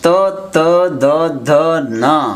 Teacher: దంతాల దగ్గర నుంచి ఉత్పత్తి అవుతాయి గనుక వీటికి దంత్యములు అని పేరు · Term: దంత్యములని